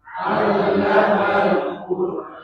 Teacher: roknya sukun tapi huruf sebelum rok itu dhamma, seperti kalimat qur ya, Quran, dia tetap dibaca Quran tebal ya